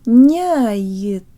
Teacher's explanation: the y sounds like an I-flavored schwa